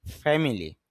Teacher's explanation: English sound ফ সাউন্ডটা নিচের ঠোঁটের পেট উপরের দাঁতের আগায়, এফ সাউন্ড, তাহলে হবে ফ্যামিলি পরিবার।